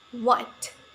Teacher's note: Next, the last is labiovelar sound w. This consonant sound is produced when the back part of tongue contacts the soft palate and lips also come close to each other.